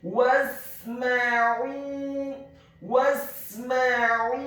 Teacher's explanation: Kemudian huruf sin-nya dibaca sukun, huruf mim-nya dibaca fathah satu harokat, dan huruf ain-nya ditekankan keluar dari tenggorokan bagian tengah dhammah dua harokat karena setelahnya ada huruf waw sukun. · Huruf ta-nya dibaca tafkhim tebal dengan posisi bibir bawah kita agak tertutup dan posisi lidah kita di langit-langit atas. Kemudian ditarik secara tipis.